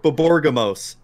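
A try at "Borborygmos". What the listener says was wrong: Borby. No, it's not Borborgimos because the Y is before the G. Right, but you're saying Borborgimos. Gimos, but it's Borborigmos.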